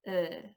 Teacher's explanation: a nothing sound that happens kind of just in the middle space of your mouth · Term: neutral vowel sound